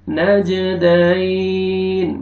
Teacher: جیم پہ قلقلہ، double sound آئے گا